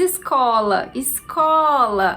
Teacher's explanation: a sílaba co é a sílaba mais forte